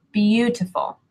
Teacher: even though it's a long word, there's only one part that is stressed, and that would be the ooh, like blue.